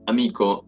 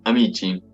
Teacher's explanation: en la primera palabra hay una velar, k, en lugar de una palatal como aparece en la segunda, sh. La adjunción de la vocal i, un proceso morfológico para la formación del plural, causa la palatalización de k en ch, un proceso fonológico.